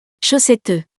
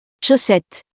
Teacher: In this word, we don't pronounce the last E